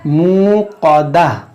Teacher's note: ये क़ाफ़ हुरूफ़ मुश्तालिया है, इसको मोटा करेंगे